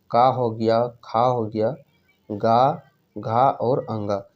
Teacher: तो इसमें जो पहला दूसरा वो तो अघोष होता है, बाकी तीन सघोष यानी कि घोष होते हैं। ठीक उसी प्रकार और अल्प प्राण और महाप्राण में बात करते हैं, तो पहला अल्प प्राण, ये अल्प प्राण, फिर ये महाप्राण, फिर अल्प प्राण, फिर महाप्राण, फिर अल्प प्राण, यानी कि ये अल्टरनेट होता है।